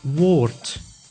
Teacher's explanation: at the end of the word, the D is pronounced as T, like in woord, which means word.